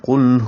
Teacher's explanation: قاف موٹا پڑھیں گے، پر کریں گے اور لام سے ملائیں گے، لام پہ اظہار